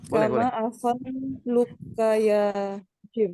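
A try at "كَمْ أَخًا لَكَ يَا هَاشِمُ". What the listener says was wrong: Nah, ini bukan nama. Hikam. Kam. Kam akhon. Ya, kam akhon laka, bukan luka, tapi laka, lamnya ya, kam akhon laka ya Hashimu.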